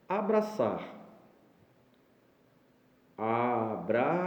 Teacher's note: Novamente a tonicidade na última sílaba, nós temos o exemplo de oxítona de novo.